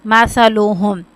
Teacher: اب سا کو یہاں پہ نرمی کے ساتھ ادا کرنا ہے جیسے ہم زال کو بھی پڑھتے ہیں کیونکہ یہ حروف لسویہ میں سے آ جاتے ہیں.